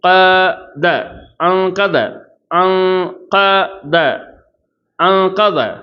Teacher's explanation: அப்போ அன் வெளிப்படையாக ஓதக்கூடாது, மறைக்கணும் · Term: இஹ்ஃபா